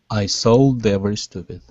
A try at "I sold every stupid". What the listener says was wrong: Good. All right, nice job.